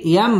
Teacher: মিম সাকিনে ইজহারে খাস গুন্না ছাড়া পড়তে হবে